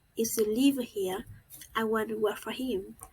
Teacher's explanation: The tone rises in the if clause and falls gradually in the main clause.